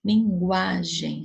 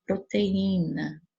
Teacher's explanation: A paroxítona, penúltima sílaba tônica, a penúltima sílaba da palavra é mais forte.